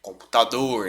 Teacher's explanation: Computador, né? Sílaba tônica é a última. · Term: oxítona